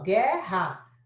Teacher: Se você faz a transcrição, você não fala o U. Então, é só o G que representa.